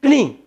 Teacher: यम वर्णों का उच्चारण स्थान क्या हो जाता है? नासिका, नाक से बोला जाएगा।